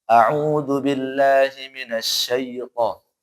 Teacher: Kemudian yang setan itu jangan jangan terlalu ke e ya. Azubillah minasya pakai i sedikit. Jadi dia tuh kayak tengah-tengah gitulah.